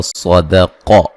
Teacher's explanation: پہ قلقلہ ہے، دال کو ہلا کے پڑھا جائے گا، صدق صاد اور قاف کو موٹا ادا کریں گے